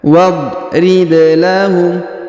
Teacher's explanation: Wadrib. Kemudian huruf ba berharokat sukun kita pantulkan atau kita qalqalahkan